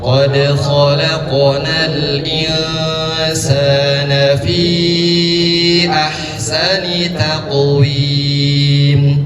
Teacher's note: qof qalqalah harus pantul kemudian taqawim dipantulkan juga